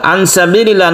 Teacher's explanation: nun mati bertemu dengan Sin ini kita baca ikhfa Hakiki kita samarkan membacanya didengungkan juga